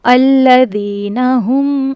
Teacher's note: الذین ہم، یہاں پہ ہا کا مخرج، اس کو ہم نہیں پڑھنا، ہم پڑھنا ہے. ہا کا مخرج ہے حلق کا سینے کی طرف والا حصہ